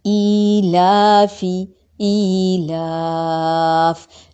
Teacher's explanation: جیسے حروف مدہ ایک الف کے برابر لمبے ہوتے ہیں تو یہ عارض وقفی کی صورت میں 3 الف کے برابر تقریباً لمبا ہوگا۔ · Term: مد عارض وقفی